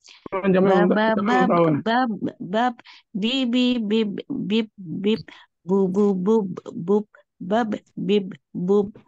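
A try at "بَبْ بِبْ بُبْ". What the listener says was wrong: Pantulannya kemana Bu? Menghilang? Be-nya ya, menghilang. Jangan sampai menghilang.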